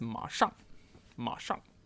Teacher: third tone fourth tone